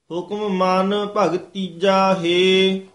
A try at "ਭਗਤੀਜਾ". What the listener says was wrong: ਹੁਕਮ ਮਨ ਭਗਤੀਜਾ ਹੇ ਭਗਤੀ ਜਾ ਧੱਦਾ ਨਹੀਂ ਲਾਉਣਾ ਭਗਤੀ ਜਾ ਹੇ